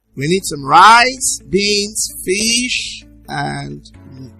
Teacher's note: in enumeration, it is said that the final item in the list is usually said on the falling tune.